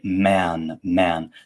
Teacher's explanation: the a vowel is actually slightly diphthongized meaning um it's sort of uh it shifts a bit from one mouth position to another um when it's before sounds like n or m